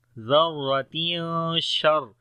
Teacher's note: گے، را کو موٹا پڑھیں گے، زبر ہے اس کے اوپر، تنوین کے بعد شین آ گیا تو اخفا کریں گے یہاں پر ، ذرۃ شر، شین کو را کے ساتھ ملائیں گے شر،